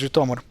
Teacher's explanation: look up where the emphasis goes, and here it's on the O. So it's Zhytomyr.